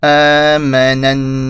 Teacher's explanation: And because the noon has a shadda, this is the ghunna rule.